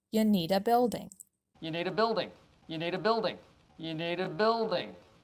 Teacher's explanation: remember to stress the words need and building